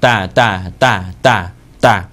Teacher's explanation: นะโคนฟันบนด้านในนะโคนฟันบนนะโคนฟันนะครับข้างนอกสุดเลยเนี่ยที่คมๆตรงนี้ก็คือไรฟันหรือปลายฟันอันนั้นเป็นที่สุดท้ายขยับขึ้นไปนะครับตรงที่ฟันกับเหงือกต่อกันอยู่ตรงนั้นแหละนะครับเสียงต่อด้าต้านะครับต่อด้าต้านะหรือว่าเอาคุ้นเคยก่อนก็ตัวต่อเต่าบ้านเรา แต่ว่าต้าในภาษาอาหรับเนี่ยมันจะพ่นลมหน่อยนะครับพ่นลมหน่อย